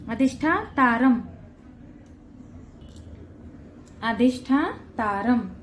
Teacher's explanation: र वर जो अनुस्वार आहे त्याचा उच्चार म करायचाय